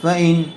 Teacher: نون ساکن کے بعد حروف حلقی میں سے حمزہ آیا ہوا ہے، اس لیے بغیر غنّے کے جلد اظہار کر کے پڑھیں گے۔